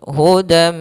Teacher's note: membacanya masukkan tanwin ke huruf mim dan ditahan maka hudam Mir hudam tahan m hilang nunnya masuk ke Mim hudam dan di sini idgam binguna juga kita namakan dengan Idgham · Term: Idgham bhunah